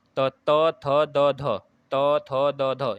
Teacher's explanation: दांतों पर जीभ लगाने से होता है ना, ऊपर के दांतों पर। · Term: दंत व्यंजन